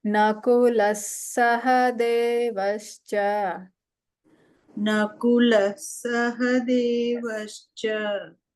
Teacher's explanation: Here the Visarga changes to Sakara, so no need to pronounce the Visarga. · So Nakula Sahadev, just give a stress on the Sa, that's all.